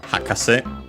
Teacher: this would be accented on the first syllable on the ha, hakase.